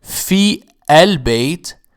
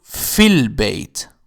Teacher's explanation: the result is that the alif is not pronounced. And instead of saying fi al-bayt, we change it to fil bayt. Ya get connected to lam directly. · Eligible means that when preceded by another word, the Hamza and its vowel drop in both pronunciation and writing. For instance, in the phrase fil bayt, there should be normally Hamza and Fatha on the word al-bayt. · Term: Hamzat al-wasl